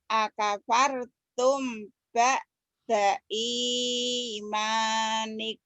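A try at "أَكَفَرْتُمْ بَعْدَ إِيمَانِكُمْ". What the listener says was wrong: Bagus.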